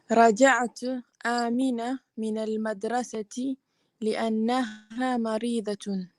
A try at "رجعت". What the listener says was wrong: Okay, it's even got a sukoon on the ta. If you said raja'tu, you'd say I returned. Yes, but it's not raja'tu, is it? If it was raja'tu, it would be a dhamma, not a sukoon. Raja'at.